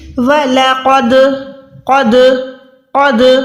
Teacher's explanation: अगर ये हुरूफ साकिन हो जाएंगे तो हमने आवाज को, जब भी ये साकिन हुरूफ होके आएंगे कुरान पाक में कहीं भी, आपने कैसे अदा करना है, इनमें लर्जिश लानी है। आवाज को क्या करना है, ऐसे फील हो कि आवाज लौटता हुआ महसूस हो। वलक़द, क़द नहीं, क़द, अगर ऐसे पढ़ेंगे तो ये आवाज दाल में लौटता हुआ लर्जिश नहीं आ रही। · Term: कलकला